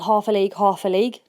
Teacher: two light beats followed by a heavy beat expresses the sound of the hores Galloping there are six numbered